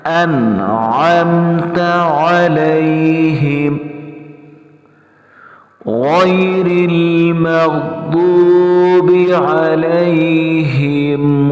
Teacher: علیہم میں بھی ہم نے عین کو ادا کرنا ہے، حمزہ نہیں پڑھنا